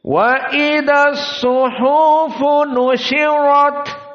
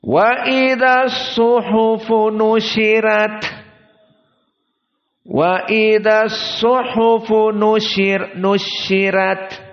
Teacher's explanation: Adapun qiraah dari Warsh dibaca dengan tarqiq ar-ra.